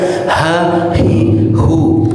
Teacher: antara a dan h itu hanya hembusan udaranya aja. Sumbernya sama. Ya, mau a dengan vokal fathah atau dengan i sama.